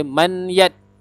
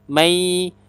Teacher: Kalau kita baca dengan bacaan idgham, bunyinya adalah mai. Nun mati tadi kita masukkan bunyi dia ke dalam huruf selepas dia, huruf ya.